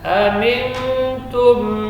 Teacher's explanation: Fa idza amintum فإذا أمنتم syiddah dan hamas. Dan mim sukun kemudian fa izhar, berarti bibirnya rapat dan tekan